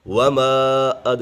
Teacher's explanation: یہاں پر حرف مدہ کے بعد حمزہ دوسرے کلمے میں ہے تو یہاں پر مد منفصل ہوگا